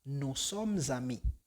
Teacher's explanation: La S en som combina con ami. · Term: liaison